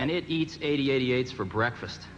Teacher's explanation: There's a really subtle kind of drawn-out S sound that Jobs had.